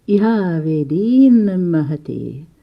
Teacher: Here was the same avedit as above, but meeting with a nasal, is a nasal M. So then the da or ta became a nasal itself.